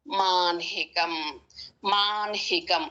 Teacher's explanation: హ కు నకారం కానీ మకారం కానీ వచ్చినప్పుడు ముందు ఒత్తు పలికి ఆ తర్వాత అక్షరం పలుకుతాము